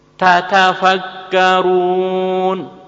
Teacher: Tekanan pada tak pertama dan tak kedua harus sama, tidak boleh dikurangi.